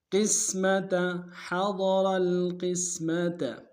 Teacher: قاف کو سین کے سامنے لانا ہے، قاف کو موٹا ادا کریں گے، سین کی سیٹی باریک ہوگی. تا کو نمشہ ادا کریں گے.